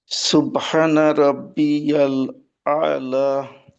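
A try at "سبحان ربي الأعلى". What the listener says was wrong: উম, লা একটু টান হবে।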